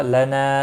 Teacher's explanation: نا الف مدہ ہے، ایک الف کے برابر کھینچ کر پڑھیں گے